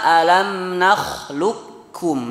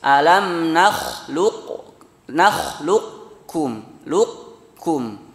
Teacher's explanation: Kalau kurang sempurna, naqis, alam nakhluqukum, lukum. Ya, masih ada sifat isti'la'nya dari qaf. Nakhluqukum beda dengan nakhluqukum langsung tipis ke kaf, ya.